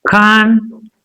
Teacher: The stress will be on this second syllable. Concerto, trisyllabic word.